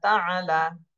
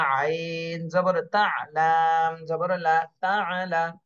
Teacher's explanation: তা, আইন জবর তা, লাম জবর লা, তাআলা। আইনের উচ্চারণটা গলার মধ্যে আটকায় যাবে